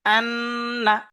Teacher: নুন মুসাদ্দাদ ওয়াজিব গুন্না, একে একালিফ পরিমাণ গুন্না করে পড়তে হবে